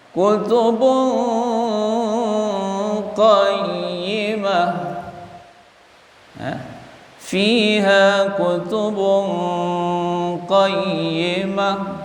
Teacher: baris tanwin jumpa dengan qaf ikhfa, posisi qaf di pangkal lidah